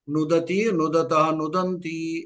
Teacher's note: ప్రయోగంలో అణ ఉండదు నకారం మామూలు నకారమే అంటే దంత్యం ధాతు పాఠంలో ఉనోద అని మూర్ధన్యం అంటారు అణ అంటూ ఉంటాం దానికి దంచనకారమే